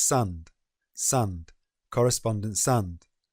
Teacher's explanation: correspondence links to the conjunction and to make correspondence sand